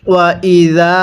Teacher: জালের মধ্যে আমরা এক আলিফ টান দিব, কারণ জাল আলিফ জবর, যা জবরের পরে এরকম খালি আলিফ থাকলে এক আলিফ টেনে পড়তে হয়।